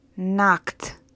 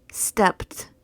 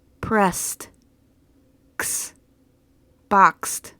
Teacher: sounds like T when the verb ends in a whispered sound it's a voiceless sound you make these sounds only with air you do not use your vocal chords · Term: T sound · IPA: /t/